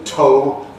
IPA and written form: toʊ (tow)